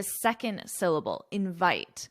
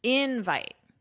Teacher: with verbs, the syllable stress is on the second syllable invite, but with nouns, the syllable stress is on the first syllable